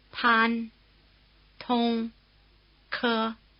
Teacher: Chinese P, T, and K sounds are very strongly aspirated. · The initial consonant sounds are more explosive than their English equivalents. You might also say they're breathier.